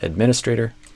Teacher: I think you stressed the stray syllable, and I would stress the min.